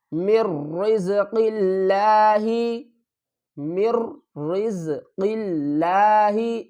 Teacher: میم کو را سے ملائیں گے، مر، نون کو نہیں پڑھیں گے